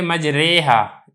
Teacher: را ممالہ باریک ہی پڑھی جائے گی